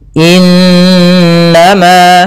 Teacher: Ini bacaan ghunah. Cara membacanya suara n-nya ditahan dua harakat. · Pada bacaan innama, di sini ada nun berharokat tasydid diwarnai dengan warna hijau. Ini bacaan gunnah. Cara membacanya, suara n-nya ditahan 2 harokat. Innama, nah, baru dilepas.